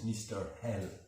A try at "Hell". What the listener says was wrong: L. You don't pronounce the H in French. Mr. L. You don't pronounce H in French, so it's not Hal, it's L. Mr. L.